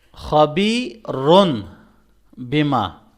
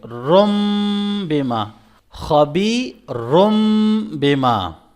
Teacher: تو تنوین کے بعد اگر با ہے تو ہم اس تنوین کو کنورٹ کر دیں گے میم کے اندر، اس کی جگہ ہم میم پڑھیں گے۔